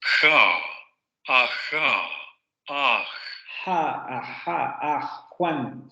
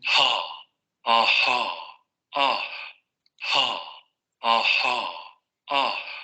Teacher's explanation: La del inglés es esta glotal. Se oye como con mucho más aire, más aspiración.